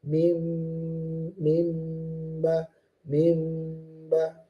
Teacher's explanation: cara baca yang kita pakai adalah iktibakus safatain, yaitu merapatkan bibir dengan lembut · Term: iqlab